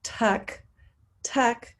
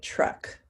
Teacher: your lips push out they're more rounded and they feel like the ch sound